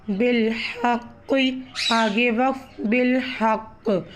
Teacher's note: جب ہم قوف کے زیر کو وقف میں تبدیل کریں گے تو یہاں پر قلقلہ کا بھی قاعدہ ہوگا، قوف پر جزم آنے کی وجہ سے قوف پر قلقلہ ظاہر ہوگا۔